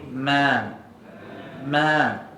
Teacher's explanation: huruf mim jangan baca tebal mim ni nipis